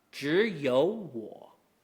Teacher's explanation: when you have a two-character word that is both third tones, followed by a single character word that is a third tone, the two-character word will both turn into rising. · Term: friendly double rule